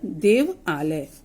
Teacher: अ और आ को जब हम जोड़ देंगे तो आ बन जाएगा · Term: दीर्घ स्वर